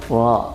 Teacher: Nah, huruf ro itu di ujung lidah. Ro tebal, bunyinya tebal, getarannya nggak lebih dari 1, tebal